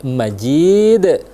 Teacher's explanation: berada di akhir ayat kedua dengan Bun ya ajibun harusnya Tapi karena kita berhenti di akhir ayat kedua maka huruf terakhir itu disukunkan atau dimatikan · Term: hukum qolqalah Kubro